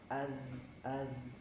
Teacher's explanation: Ketika dia dibunyikan ya, apalagi disukunkan maka dia jahar tapi ngalir gitu ya. Az az memang tidak keluar udara ya. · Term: huruf zal